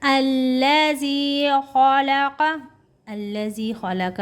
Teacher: خَلَقَ کا خاف موٹا پڑھیں گے، لام کو ہلکا پڑھیں گے، کاف کو تھوڑا موٹا کر کے پڑھیں گے